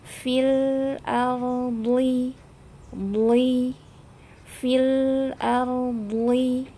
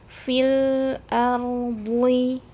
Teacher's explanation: meskipun dia harokatnya kasroh tapi dibaca tebal